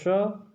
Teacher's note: और ये कहाँ से बोला जाता है, ये बोला जाता है तालु से, तालु से, ठीक है।